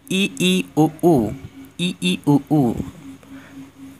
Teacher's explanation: संवृत मतलब क्लोज। जिन स्वरों के उच्चारण में मुख द्वार लगभग बंद रहते हैं